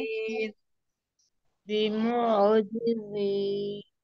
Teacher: आइन के ऊपर आपने झटका नहीं देना है, आपने इसको वाव मद्दा में भी नहीं बदलना है। اور آپ نے اس کی ادائیگی کیسے ہوگی، یہ سینٹرل تھاٹ سے نکلتا ہے، یعنی کہ وسط حلق سے یہ نکلے گا. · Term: आइन की अदायगी